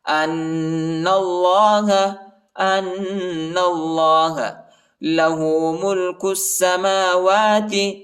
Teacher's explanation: اللہ کے نام کو موٹا پڑھیں گے، پر پڑھیں گے، الف نہیں پڑھا جاتا، الف کے اوپر حرکت نہیں۔